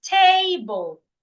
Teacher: then you should stress the first syllable an example is table it means the first syllable should be said louder longer and clearer